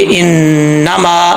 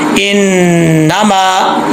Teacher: मीम के आगे अलिफ है, इसको एक अलिफ की मिकदार लंबा करेंगे